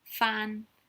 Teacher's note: fan is the highest tone fan